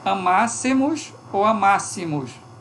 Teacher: Neutralização entre o I e o E.